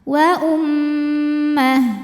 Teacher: Mim tasdid dihukumi ghunah dibacanya didengungkan. Bunyi m tahan. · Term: gunnah